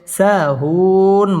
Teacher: সাহুন মধ্যে আরজি তিন আলিফ টান দিয়ে ওয়াকফ করতে হবে